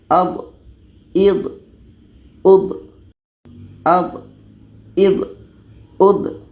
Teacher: Huruf dha ini letaknya pada salah satu tepi lidah atau keduanya bertemu dengan gigi geraham atas. Jadi hati-hati ketika sebut dha ini, jangan sampai ada hamasnya atau ada anginnya.